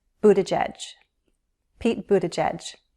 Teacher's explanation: I've listened to Mayor Pete introduce himself, and to my ears, it sounds like a schwa sound, Buttigieg. The 2 G's are soft G's and sound like a J